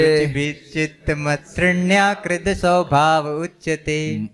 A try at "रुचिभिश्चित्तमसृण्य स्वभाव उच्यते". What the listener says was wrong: मत नहीं है, मसृण्य। रुचिभिश्चित्तमसृण्य स्वभाव उच्यते।